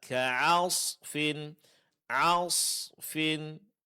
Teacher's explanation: huruf sad ditebalkan untuk membedakan dia dari huruf sin